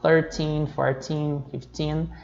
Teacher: nos números 13 até o 19, a sílaba tônica é o teen